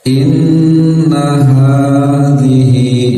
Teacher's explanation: nun bertasdid tahan 2 harokat